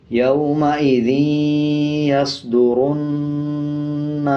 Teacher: اب یہ نون کے اوپر زبر ہے، اس کے بعد الف ہے، تو 1 سیکنڈ کھینچ کے پڑھیں گے، اور نون کے اوپر شد ہے تو غنہ بھی کریں گے